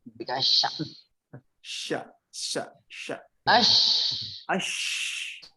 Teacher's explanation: itu adalah masuknya ke at-tafashi, anginnya menyebar di mulut